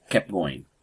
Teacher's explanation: That T sound, that kept, is dropped when you say kept going. That's a meeting sound, and that's an elision.